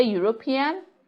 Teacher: European that begins with the sound ye which is a consonant sound and that goes to say that we say a European hmm